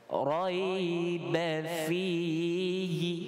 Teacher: Masuk huruf ra baru kita tafkhim dengan tebal.